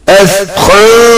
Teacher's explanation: hide the sound of noon and suppress one letter into another. It is called ikhfa.